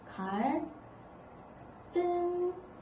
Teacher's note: 그러니까 한자어의 받침이 리을이 온 거잖아. 이 리을 때문에 뒤에 있는 디귿이 된 소리로 바뀌어서 소리가 난다